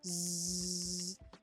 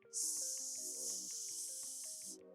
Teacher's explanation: a Z sound, Z, is voiced. I can feel the vibration in my throat. But an S sound or a S, no vibration, it is not voiced.